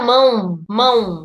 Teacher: esse o tem som de u por isso que o a é a vogal e o o é a semivogal